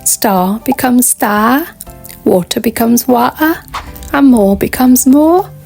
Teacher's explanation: We often drop the sound for the letter R at the end of words or before another consonant.